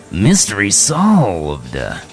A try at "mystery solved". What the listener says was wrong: Wait, that wasn't quite good. Try that again. Say mystery solved. Let's get it draw it out a little more.